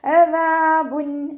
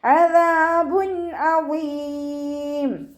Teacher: തെൻവീനിലുള്ള നൂനിനെ വ്യക്തമാക്കി മണിക്കാതെ ഉച്ചരിക്കുക. അദാബുൻ. നൂനിൻ്റെ സൗണ്ടിനെ വ്യക്തമായിട്ട് കേൾപ്പിക്കുക. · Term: ഇവ്ഹാർ